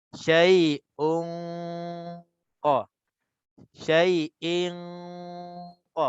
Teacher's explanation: Dia dengung dulu baru kita masuk ke dalam qaf. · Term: ikhfa